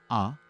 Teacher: और दूसरा यह है कि आकार से प्रैक्टिस करने से आवाज पूरी रेंज में हम आवाज को खोल सकते हैं, क्योंकि आकार से आ जो सिलेबल है, जो वावल है आ, ये सबसे ज्यादा खुला वावल है। तो आ से आप प्रैक्टिस करेंगे तो आपके आवाज भी खुलेंगे।